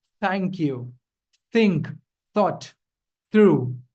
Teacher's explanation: instead of creating the s sound using your teeth, you press your tongue in between. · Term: th sound